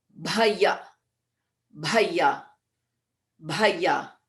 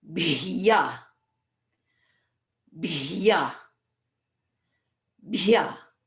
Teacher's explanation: we have the D, which is Mahaprana, and the Bhyaha, which can be tricky because we have to go from a Bha into a Ya without any vowel in between